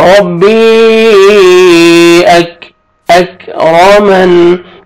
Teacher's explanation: کاف کا لائٹ سے ساؤنڈ آئے گا. کاف کو باریک پڑھیں گے